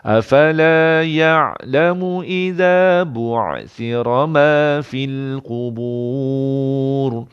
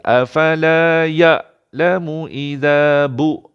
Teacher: bunyi ain ni lebih menekan berbanding hamzah. Kalau tuan-puan tak cukup tekan, afala ya'lamu idza bu', itu jadi hamzah.